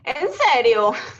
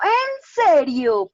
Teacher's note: Pues como Ajá, más, es decir, mucho más largo. El alargamiento está en la preposición